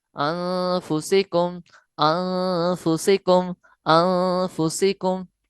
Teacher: गुन्ना है नाक के बांसे में आवाज को लेकर जाना, जिसकी मिकदार 2 हरकत के बराबर है।